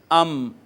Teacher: دونوں ہونٹوں کا جو باہر والا خشک حصہ ملا ہے، باہر والا خشک حصہ ملا ہے، وہاں سے میم ادا ہوئی ہے